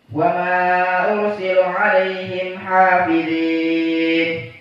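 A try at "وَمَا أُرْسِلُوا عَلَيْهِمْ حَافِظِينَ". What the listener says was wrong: 2 harokat wama-nya bukan 4.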